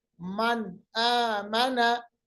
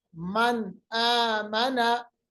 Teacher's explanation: नून की आवाज को जाहिर करेंगे, इजहार करेंगे नून की आवाज पर